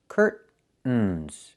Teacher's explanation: Or I can use a stop T and say curt, stop the air, put the tongue up, curtains, and go directly to the N